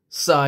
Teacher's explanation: mad wajib muttasil yang perlu dibaca lima harakat